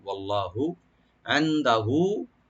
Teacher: ওয়াল্লাহ এখানে লফজ জালালা একটু মোটা করে পড়বো, আমরা ডিপ করে পড়বো